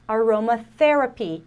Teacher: Aqui a gente tem o TH desvozeado, que é aquele soprinho, né?